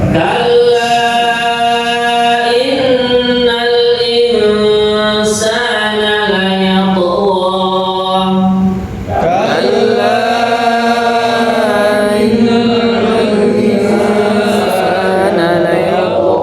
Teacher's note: pada kalimat insana ini mendengung, begitu juga innal ini mendengung